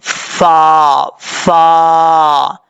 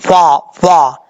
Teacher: فا کا مخرج ہے اوپر والے دانتوں کا کنارہ نیچے والے ہونٹ کی تری والی جگہ پہ لگے گا تو فا پڑھا جائے گا